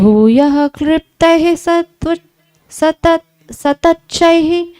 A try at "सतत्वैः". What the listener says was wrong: न तच्च नहीं, तत्वैः, वह है वो। भूयः क्लिप्तैः सतत्वैः सगण विधिगणैर् अप्यजाण्डैरखण्डैः।